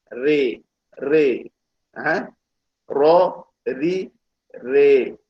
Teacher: Tapi istilah dia istilah yang khusus lah, dia panggil imalah, bacaan imalah. Bacaan dia kena berada di antara huruf yang ra yang baris atas dan huruf ra yang baris bawah.